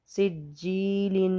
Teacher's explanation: سین جیم زیر سج، یا ساکن ہے اور یا سے پہلے زیر ہے تو اس کو ہم بولیں گے یا مدہ۔ تو یا مدہ کو ہم ایک الف کے برابر کھینچ کر لمبا کر کے پڑھتے ہیں